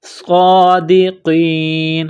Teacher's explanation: صاد کو موٹا کرنا ہے، سٹی کی آواز پیدا کرنی ہے، صاد کے اوپر کڑا زبر ہے، ایک الف کے لمٹ میں کھینچنا ہے ، صادقین، قاف کو موٹا